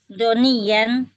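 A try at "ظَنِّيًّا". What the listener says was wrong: Nunnya tasdid. Nunnya musyaddadah.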